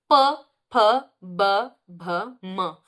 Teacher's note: तो ये सब कहाँ से, ओष्ठ, तो ओष्ठ व्यंजन हो गए